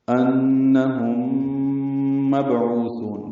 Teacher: با ساکن پہ قلقلہ ہے. عین وسط حلق سے ادا ہوگا. · انہم نون مشدد پہ غنہ ہے. میم ساکن کے بعد میم آنے کی وجہ سے ادغام ہوگا. ادغام مع الغنہ ہے. یہ ادغام شفوی ہے. · عو کو 2 حرکات لمبا کریں گے، ثا کو زیادہ لمبا کریں گے وقفاً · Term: مد وقفی